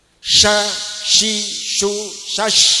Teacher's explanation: Itu harus nempel. Kalau shin karena ada sifat tafasyi, berhamburannya nafas, maka ada lubangnya tengahnya.